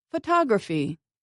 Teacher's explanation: for these the stress is on the third to last syllable